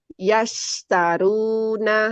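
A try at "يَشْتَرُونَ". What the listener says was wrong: Nah, udah dapat tuh tafasyinya ya. Udah mulai konsisten.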